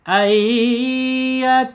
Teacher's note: Idgham itu melebur ya, b itu dengan, guna itu dengung ya. Jadi melebur dengan dengung, ditahan 2 harokat. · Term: idgham biguna